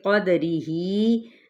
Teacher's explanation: دال کو ہم نے ہلانا ہے، ہی کو ہم 4 حرکت کھینچیں گے